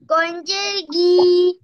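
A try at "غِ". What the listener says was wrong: তুমি টানো কেন? গয়েন্দের রি। এই জবর জের পেশ এগুলো টান হবে না, এগুলো তাড়াতাড়ি পড়তে হবে। হরকতের উচ্চারণ কিভাবে পড়তে হয়? তাহলে তাড়াতাড়ি পড়বা, গয়েন্দের রি, ফাদের ফি।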